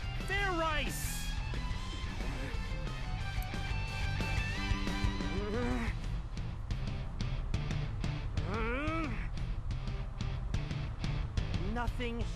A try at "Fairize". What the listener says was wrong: Like I said, it's not Fairize, it's Fairize. Do it again, and this time make sure you pronounce the Z.